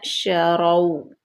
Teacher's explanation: اس کے ساتھ واو لین آ گیا، واو ساکن ما قبل مفتوح